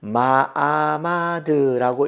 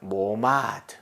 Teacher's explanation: 그러니까 마아마드가 아니고 모오마드가 되는 겁니다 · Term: 카메츠 하투비